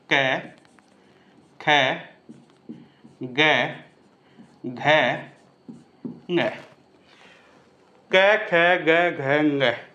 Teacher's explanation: तो ये जो गला है, ये वाली जो नली है, यहाँ पे कंठ है, और शुरुआत में जो क वर्ग है वो कंठे ध्वनियाँ ही होती हैं